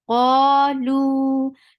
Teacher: کیونکہ واو, یہ دیکھیں واو ساکنہ ہے, اور اس سے پہلے والے حرف کے اوپر ضمہ, یہ دیکھیے یہ, تو اس لیے یہ, تو جب بھی یہ 3 میں سے کوئی بھی کمبینیشن قرآن میں آئے گی تو اس کو لمبا کر کے پڑھیں گے, 2 حرکات لمبا کر کے پڑھیں گے. قا 2 counts long, لو 2 counts long.